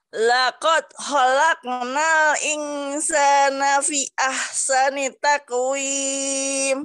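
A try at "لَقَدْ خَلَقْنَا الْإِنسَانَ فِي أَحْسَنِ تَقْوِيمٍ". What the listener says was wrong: Nah, fi ahsani taqwim kita panjangkan ya, Bu. Laqad khalaqnal insana fi. Nah, panjang tuh. Fi ahsani taqwim.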